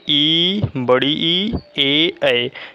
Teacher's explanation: जैसे यदि जीभ के प्रयोग के आधार पर बोला जाए तो जो अग्र स्वर है, अग्र स्वर मतलब क्या होता है कि जो जीभ का हमारा जो आगे का भाग काम करता है उसे हम कहते हैं अग्र स्वर